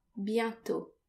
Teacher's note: the final T is silent